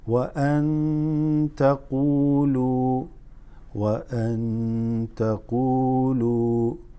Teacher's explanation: This قو and lu are slightly extended. · نون ساكنة followed by ta makes it إخفاء